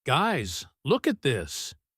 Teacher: So, her rhythm goes up. The pitch of her voice rises. · The pauses are very short because she is eager.